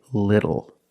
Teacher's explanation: the T changes to a fast D in American pronunciation